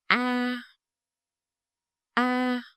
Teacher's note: With our main vowel, a, here written as a, your lip shapes is mouth open, medium wide, center of tongue low.